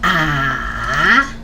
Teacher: a ah and this is the third tone the third top just like the tone mark goes down and then go up